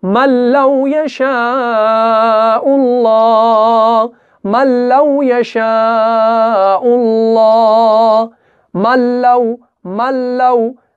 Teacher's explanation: میم اور لام کو ملائیں گے، نون ساکن کو نہیں پڑھیں گے۔ کیوں؟ کیونکہ ہمیں یہاں پہ ادغام کرنا ہے لیکن بغیر گنہ کرنا ہے، یعنی ادغام کا مطلب ہے ایک حرف کا دوسرے حرف میں مل جانا، تو ہم اس میم کو اس کے اندر ملائیں گے۔ · ادغام بغیر گنہ کے ہوگا، یعنی ادغام کامل ہوگا۔